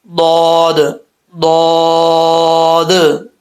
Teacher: آپ کی زبان کی جو لیفٹ سائڈ ہے جس کو کروٹ بھی بولتے ہیں، یہ اوپر والے جو داڑھیں ہیں لیفٹ سائڈ کی، ان داڑھوں کے ساتھ لگے گا تو یہ ضاد پڑھا جاتا ہے، ٹھیک ہے؟ داڑھوں کی جڑیں ہیں نا، وہاں پہ یہ ٹچ کرے گا تو ضاد پڑھا جائے گا، ضاد ضاد، ٹھیک ہے؟ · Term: ضاد کا مخرج